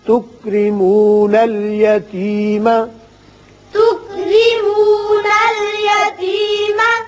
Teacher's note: یہ را باریک ہوگا، نیچے زیر ہے